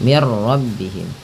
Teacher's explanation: Nah, karena di sini nun mati bertemu ra, langsung saja diidghamkan. Idgham itu memasukkan bunyi nun ke ra sehingga bunyi nunnya tidak terdengar lagi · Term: idgham bila gunnah